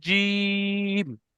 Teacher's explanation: জিমটা ওখানে তিন আলিফ পরিমাণ টান দিয়ে পড়তে হবে